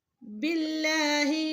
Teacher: یہاں پہ اللہ کا لام موٹا نہیں ہوگا کیونکہ پیچھے زیر ہے